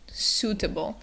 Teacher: the vowels, the U and I together. They're making an oo sound, so it's suitable.